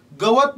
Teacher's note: पण व मधल्या अ चा उच्चार हा थोडा लांबट होतोय. गवत. आणि याच्यामधला सर्वात जास्त लांबट ह्या व मधला होतोय.